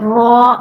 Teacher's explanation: را، زبان کی نوک اور مقابل کے تالو سے ادا ہوتا ہے، زبان کی نوک اور اوپر کا جو مقابل کا تالو ہے ادھر آپ لگائیں تو را ادا ہو جائے گا، ٹھیک ہو گیا۔